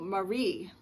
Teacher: Marie's name is accented on the second syllable